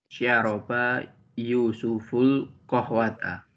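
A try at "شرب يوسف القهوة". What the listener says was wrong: laisa syaroba, syariba.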